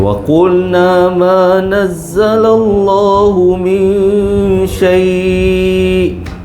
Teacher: Kalau min saai nun bertemu syin ikhfa hakiki. Dengung.